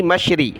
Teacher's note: را زیر ری، مشری، را کو باریک کیا